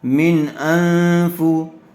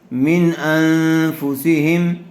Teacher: اور یہاں نون ساکن کے بعد فا آیا ہوا ہے، اس لیے غننے کے ساتھ اخفا ہوگا۔